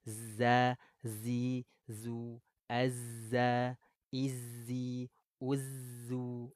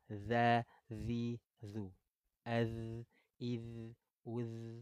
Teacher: kalau dalal tidak ada berdesisnya